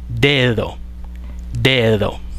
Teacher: tiene 2 alófonos. El oclusivo, que sería el que aparece al inicio de la palabra dedo, y también uno aproximante, que es el que aparece entre vocales, en la misma palabra.